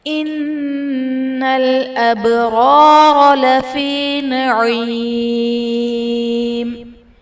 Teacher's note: ابرار میں با حرف قلقلہ ساکن ہے، تو یہاں پر قلقلہ خوب ظاہر کریں گے